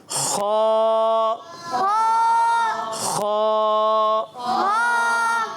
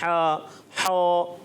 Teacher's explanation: खा की अदायगी जो होती है ना, ये हलक के ऊपर वाले हिस्से से अब अदा करना है।